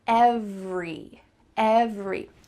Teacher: There's just 2 parts. Ev-re. That middle vowel is cut out. Usually in fast conversation, we don't say every with that sound really clear.